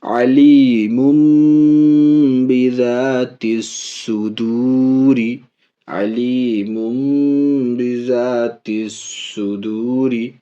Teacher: تنوین کے نون کو میم سے بدل رہے ہیں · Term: اقلاب